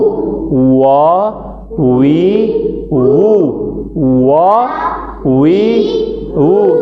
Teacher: दोनों होठ गोल करके खोले जाते हैं